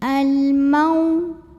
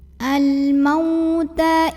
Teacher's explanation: Di sini ada harfulin, huruf lin, karena ada waw sukun yang didahului fathah. Maka kita baca lunak atau lembut